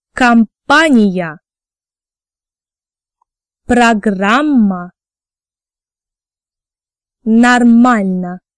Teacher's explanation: in unstressed position, we pronounce O like A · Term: unstressed O rule